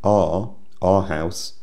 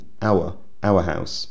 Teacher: like many southern English speakers I have an unstressed form R our house and a stressed form our our house the unstressed form R is used most of the time time